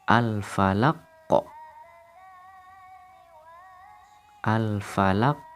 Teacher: Qalqalah kubro terdapat pada kalimat falaq. Qalqalah artinya suara yang memantul. Maka suara qaf di sini harus kita pantulkan.